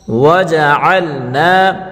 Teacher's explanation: عین کو حلق کے بیچ سے نکالیں گے اور عین کو لام کے ساتھ ملا کر پڑھیں گے